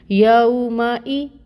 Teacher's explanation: پھر میم، واو کے لیے آپ نے اپنے لپس کو اچھے سے گول کرنا ہے، یو، میم کے اوپر فتح کی حرکت ہے، 1 کاؤنٹ پڑھیں گے۔ حمزہ کے نیچے کسرہ ہے، ای کی ساؤنڈ آئے گی اور 1 کاؤنٹ اس کی مقدار ہوگی